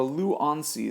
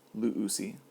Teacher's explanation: And then for luonsi, something a little strange happens. The nu drops out, and you get compensatory lengthening, so that omicron lengthens to omicron upsilon.